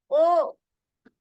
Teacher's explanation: কন্ঠ থেকে উচ্চারণ হবে। আর ঠোট দুইটা গোল হয়ে যাবে। আপনি ঠোট গোল ছাড়া বা ঠোট ইউজ করা ছাড়া আপনি ও উচ্চারণ করতে পারবেন না।